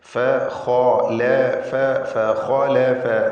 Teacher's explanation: ഇതിൽ ഖായിന് മാത്രമാണ് തഫ്ഖീം ചെയ്യേണ്ടത്. ഇസ്തിഅലാൻ്റെ ഹർഫുകളിൽപ്പെട്ടതായതുകൊണ്ട് പൂർണ്ണമായ തഫ്ഖീം കൊടുക്കുക. മറ്റക്ഷരങ്ങൾക്കൊന്നും തഫ്ഖീം വരാതെ സൂക്ഷിക്കേണ്ടതാണ്.